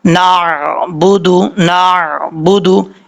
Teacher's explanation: نون زبر عین نار، با پیش بو، دال پیش دو، نار بودو، آئین کو جھٹکے کے ساتھ نہیں پڑھنا، نارمل طریقے سے پڑھنا ہے